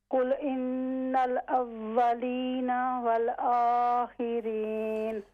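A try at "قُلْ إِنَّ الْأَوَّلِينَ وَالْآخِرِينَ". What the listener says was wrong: ہاں جی یہ جو آپ واو ادا کر رہی ہیں یہ آپ کے جو دانت ہیں کیا ہونٹوں پر لگ رہے ہیں؟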